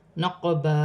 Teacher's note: قاف ساکن ہے، حروف قلقلہ میں سے ہے، قلقلہ کے ساتھ ادا کیا جائے گا. جیسے نقبا، الف مدہ بن رہا ہے، ہاں پر کھڑی زبر ہے، یہاں بھی 1 الف کی مقدار کھینچ کر پڑھا جائے گا.